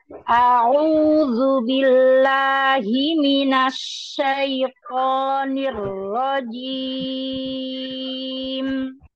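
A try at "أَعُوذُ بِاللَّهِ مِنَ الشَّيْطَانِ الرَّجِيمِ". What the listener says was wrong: Oh, itu tidak ada jeda. Syaitan. Syaitan.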